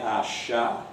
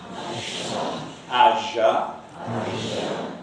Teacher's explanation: you have this very obvious trumpet-shaped lip rounding. It's rather different from other types of lip rounding.